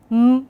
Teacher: M would be bilabial, nasal, voiced.